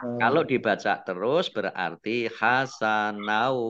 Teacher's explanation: Fathah tanwin bertemu dengan huruf wawu, idgham bi gunnah. Masuk dengan mendengung, mendengung wawu.